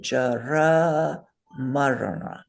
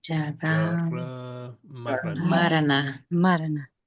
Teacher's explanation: that na is cerebral. So put your tongue up against the roof of your mouth and say Jara Marana.